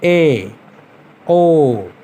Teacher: जिन स्वरों के उच्चारण में मुख द्वार आधा बंद रहता है, जैसे ए, ओ। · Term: अर्धसमृत